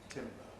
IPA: ˈtɪmbə